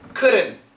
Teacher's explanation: N cancels the T.